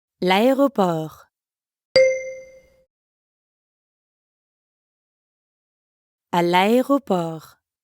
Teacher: Notice again how le and aéroport are connected in l'aéroport. That's because aéroport starts with a vowel.